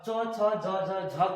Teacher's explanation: च छ आपके जीभ जो है जाकर के तालु में सटता है, तो इसका उच्चारण जो है तालु से होता है। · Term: तलाव्य वर्ण